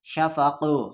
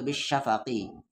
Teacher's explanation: قلقلہ ہوگا، یعنی آواز کو ہلا کر پڑھیں گے شفق۔ اگر نہیں رکنا ہے آپ کو تو پھر یہاں پر قلقلہ نہیں ہوگا تو بالشفقی، پھر قلقلہ نہیں ہوگا۔